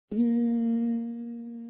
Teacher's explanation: So that meant I was disrupting the air that needed to come out of my nose, the air that needed to make that M sound. My VP port opened like it should have, directed the air to the nose to make that M sound.